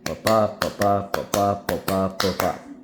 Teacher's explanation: An iamb is two stresses, an unstressed syllable followed by a stressed syllable. So, ba-ba, that's an iamb, so that's where we get iambic.